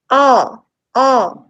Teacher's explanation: when you say ah it is the back of the tongue that is just raised a little bit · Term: back vowels, back vowel